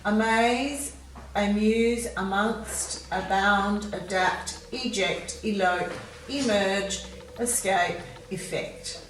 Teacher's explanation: in this list we're using the schwa sound at the start